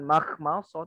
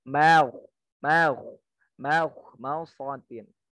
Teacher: karena huruf kho-nya dia memang isti'la, mimnya terbawa